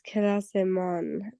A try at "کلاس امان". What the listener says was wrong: Yes, it has to be long, otherwise it would sound like a class man. So exactly, class man. Exactly, or saying then class ma. کلاس امان versus کلاس ما بزرگ است.